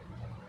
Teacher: इसमें ध में जो स्वास वायु अधिक मात्रा में निकल रही है। तो ये महाप्राण की श्रेणी में शामिल है।